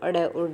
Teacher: तो ये हमें पता है कि उच्चिप्त ध्वनियाँ है, जब हम बोलते हैं तो हमारी जीभ है वो एकदम ऊपर से नीचे गिरती है, तो अड़ और ढ हो जाएंगे ये उच्चिप्त ध्वनियाँ।